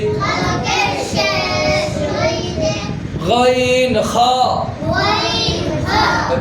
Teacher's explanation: 3 নম্বর মাখরাজ, হলকের শেষ হইতে